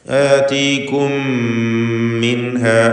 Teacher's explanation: മിൻഹ എന്നതിൽ സാക്കിനത്തായ നൂനിനെ ഇൽഹാർ ഹൽഖി നൽകി മണിക്കാതെ വെളിവാക്കുക. · സാക്കിൻ താമീം ശേഷം മീം ഇവ രണ്ടും ഒറ്റ മീമാക്കി മാറ്റി മണിച്ചുച്ചരിക്കുക. ഇദ്ഗാം ചെയ്യുക. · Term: ഇദ്ഗാം ഷഫവി